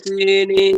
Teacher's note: সিতে এক আলিফ টান হবে